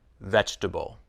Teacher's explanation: every vegetable looks like it has four syllables but we pronounce it as three syllables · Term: dropped